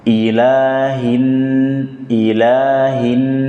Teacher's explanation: Nun bertasydid dibaca dengan gunnah, ditahan, didengungkan